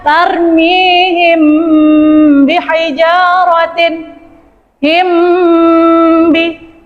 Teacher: Mim bertemu ba. Cara membacanya samar dan dengung. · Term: Ikhfa safawi